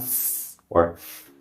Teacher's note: Because these are voiceless sounds, there should be no vibration.